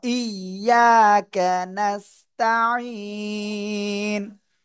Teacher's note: জবরের বাম পাশে খালি আলিফ, এজন্য আমরা এক আলিফ টেনে পড়বো